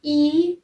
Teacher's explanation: it's place of articulation is front and it's manner of articulation is close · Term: long e